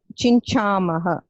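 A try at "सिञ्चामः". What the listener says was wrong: Not chincha, it is C. Sinchamaha.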